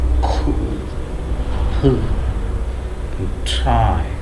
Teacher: A strong puff of air will be released when we pronounce these three words. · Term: aspirated sounds